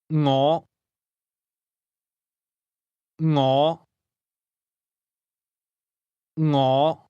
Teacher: This word begins with a soft NG sound. Something like the end of the English word singing.